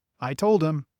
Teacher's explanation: The H sound at the beginning of words like him and her often disappears, too. I told him in fast speech sounds like I told him.